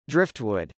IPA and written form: drˈɪftwˌʊd (driftwood)